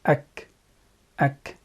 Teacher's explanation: its articulation point is the deepest part of the tongue, okay, towards the mouth, and what lies opposite to it of the mouth. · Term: Kaaf